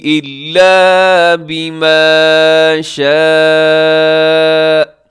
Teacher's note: بما شاء یہاں پہ جو مد ہے اسے مد متصل کہا جاتا ہے، مد واجب. اسے تو ضرور لمبا کیجیے گا. اور جب وقف کرتے ہیں حمزہ پر وقف کرتے ہیں تو ایک جھٹکے کے ساتھ آپ نے جو ہے وہ رکنا ہے، وہ بریک لگانی ہے.